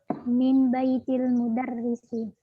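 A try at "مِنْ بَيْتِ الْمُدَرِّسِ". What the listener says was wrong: Ahsan.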